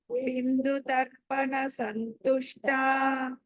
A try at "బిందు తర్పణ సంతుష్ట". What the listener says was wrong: సో బిందు అక్కడ బి తర్వాత అనుస్వరము దా ఉంది, నకారం పలకాలి. ఆ తర్వాత సంతుష్ట దగ్గర కూడా స తర్వాత అనుస్వరం ఉంది, అక్కడ కూడా నా పలకాలి.